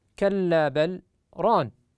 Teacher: من هذه الكلمات في قوله تعالى كلا بل ران فيسكت على اللام حفص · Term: السكت